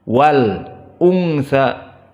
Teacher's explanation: lam dibaca, tidak diidghamkan seperti khalaqadz dzakara, tetapi wal unsa lamnya dibaca jelas wal unsa. Dan hamzah di sini dalam keadaan muraqqaqah al unsa, dan nun dalam keadaan muraqqaqah, dan nun sakinah al unsa iltaqama asa, maka dia mempunyai hukmu gunnah, dan gunnah makhrajnya dari khayshum, dari hidung. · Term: al-qamariyah